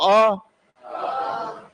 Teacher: अ में आपका क्या हो रहा है आधा ही खुल पा रहा है पूरा नहीं खुल पा रहा है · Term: अर्ध विवि